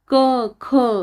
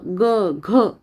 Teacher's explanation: त्यातील क आणि ख हा अघोष वर्ण आहे आणि ग आणि घ हा घोष वर्ण आहे